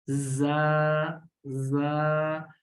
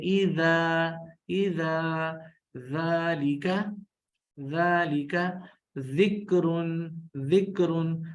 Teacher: اور زال اس کا جو مخرج ہے وہ بالکل سیم ہے، فرق صرف یہ ہے کہ زا میں سیٹی ہے، زا، زا، اور زال کے اندر سیٹی نہیں ہے